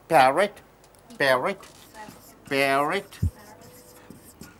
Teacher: so the p is pronounced as par the sound comes only through your lips